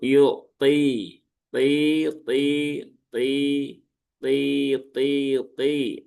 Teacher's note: pangkal lidahnya dinaikkan agar suaranya menebal ya. Ada gema di dalam mulut tanpa harus memonyongkan bibir. Jangan yuk tui, tui, ya, nggak perlu sampai seperti itu. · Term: huruf po